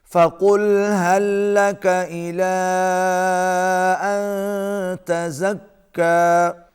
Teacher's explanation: یہاں پر اخفاء مع الغنہ ہے، آواز ناک میں جائے گی۔